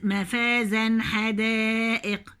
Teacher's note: مفازا هجيب التنوين واضح · هنا التنوين بعديه حرف الحاء، هنا ايه؟ اظهار